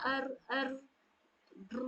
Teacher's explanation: थरथरी और कपकपाहट वाली साउंड लाते हैं। तो इस पर थोड़े से स्कूटर जैसे बच्चे लोग चलाते हैं ना अर अर ड्रू इस टाइप का तो उस टाइप का साउंड आनी चाहिए लेकिन उतना ज्यादा भी नहीं कि पूरी की पूरी इसकी जो खूबसूरती होती है वो खराब हो जाए। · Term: तकरीर